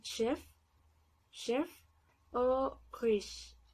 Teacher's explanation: un fonema palatal porque nuestra lengua también se pega bastante al paladar, pero también se juntan los dientes de esta forma, como cuando hacemos una S y al juntarlo sale como sh.